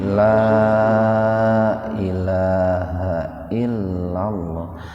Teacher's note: La yang pertama bukan 2 harokat lagi. 4 sampai 6 ketukan.